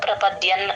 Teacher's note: త ముందు సున్న పదం మధ్యలో వస్తే ఎన్ సౌండ్ ప్రపద్యన్ ఎన్ అనే అక్కడ చెప్తాము ప్రపద్యంతే నరాధమాః ధ కి మహాప్రాణం ఉంది